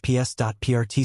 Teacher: Passport is easier slash ps.prt slash with stress on the first syllable. Just remember to say that T at the end clearly.